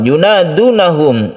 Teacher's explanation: ini adalah Mad asli atau Mad Thabi'i yang kita baca panjang satu Alif